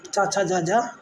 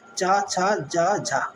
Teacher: इन व्यंजनों के उच्चारण में वांगंगों का स्पर्श भी होता है और प्रश्वास वायु को संघर्ष भी करना पड़ता है। हिंदी के चा वर्ग, चा छा जा जा, चारों स्पर्श संघर्षी व्यंजन हैं।